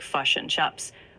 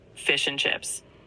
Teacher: the New Zealand accent often has a distinctive I sound, like fish and chips can sound like fush and chups